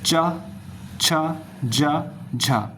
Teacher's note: अब बात करते हैं स्पर्श संघर्षी, जो थोड़े संघर्ष के साथ बोले जाते हैं। जब हम इनका उच्चारण करते हैं तो हल्का सा इसमें संघर्ष फेस करना पड़ता है।